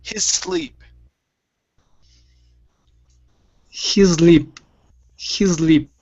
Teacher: instead of saying his with the z sound it's hiss his sleep go right to an s sound an unvoiced s his sleep he's good just like that that